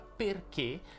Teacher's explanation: la parola perché si pronuncia con la è chiusa